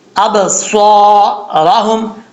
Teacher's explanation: صاد جو ہے حروف صفیریہ میں سے، اس میں سیٹی کا آنا لازمی ہے، ٹھیک ہے۔ صاد ابصارہم حروف مستعلیہ میں سے ہے، پر پڑھا جائے گا، اور را کے اوپر زبر ہو تو را پر پڑھا جاتا ہے۔